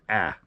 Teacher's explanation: I tend to slightly alter the alpha so it's pronounced a little bit more nasal